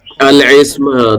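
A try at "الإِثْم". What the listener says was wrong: الاسم نہیں ہے بھائی، یہ الاسم ہے حمزہ کے ساتھ.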